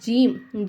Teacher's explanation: அடுத்தது வந்து ஜீம் ஜீம்ங்கிற எழுத்து எங்க இருந்து வெளியாகுதுனாக்கா நம்ம நாவு இருக்கா நாவுடைய நடுப்பகுதி இருக்கா நடுப்பகுதி கொண்டு போய் மேல உரசும்போது ஜீம் அப்படிங்கற எழுத்து வெளியாகுது